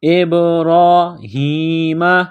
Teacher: را کے اوپر کڑا زبر ہے، ایک الف کے لمٹ میں کھینچنا ہے، را کو موٹا کرنا ہے۔ ابراہیم، یہ چشمے والی گول ہا ہے، صرف منہ سے ہوا نکالنے کی طرح اس کو پڑھیں گے۔